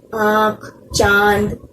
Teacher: इसका उच्चारण नाक और मुंह से किया जाता है। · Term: अनुनासिक